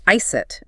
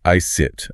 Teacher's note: It often ends with a clear T sound, so it sounds more like ice it rather than a soft iced.